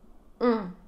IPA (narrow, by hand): ɔ̃